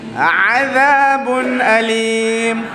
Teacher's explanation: Huruf ain tekankan, kemudian za kita gigit lidah. Za tu makhraj lah panggil.